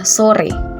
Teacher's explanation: vokal e Tengah atas depan tak bundar pada kata sore